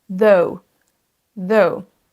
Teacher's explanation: On a un son O et U, donc c'est une diphtongue, c'est un son double.